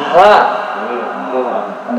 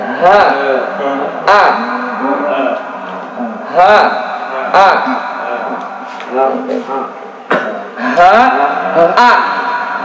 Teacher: Jangan pakai tenggorokan tengah atau tenggorokan bagian luar, tapi tenggorokan paling bawah, aqsal halqi. Ha. Dada kita itu agak ngerasa getar.